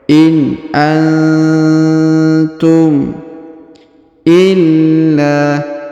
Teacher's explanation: Huruf nun sukun bertemu ta maka didengungkan dan disamarkan